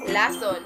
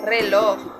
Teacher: dito ay ang dulong dila ay lumalapit o dumidiit sa punong gilagid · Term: panggilagid